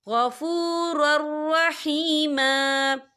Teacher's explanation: और आगे देखिए कान गफ़ूरर, रॉ के पर तनवीन है, तनवीन के बाद जो है रॉ आ रहा है और रॉ जो है हुरूफ़ यरमलून में से है, तो यहाँ पर इदगाम होगा, तो हम इसे बिना गुन्ने के पढ़ेंगे।